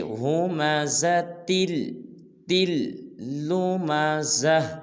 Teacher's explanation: اب یہ تل کی جو تا ہے اس کو آگے لام کے ساتھ ملائیں گے کیونکہ لام مشدد ہے